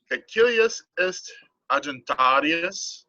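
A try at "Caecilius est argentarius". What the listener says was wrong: Your G is going to be hard, not a J, a G.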